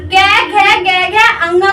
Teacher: ये हमारे यहाँ से निकलते हैं, कंठ से निकलते हैं। बोल के देखो कि हमारा गले पे हाथ लगा के बोल के देखना कि ये जब हम कै खे गे घे और अंगा को बोलते हैं तो यहाँ पे थोड़ा सा कंपित होता है, मतलब कापा कापा सा लगता है।